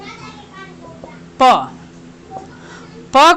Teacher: प को हम ओठ के माध्यम से बोल रहे हैं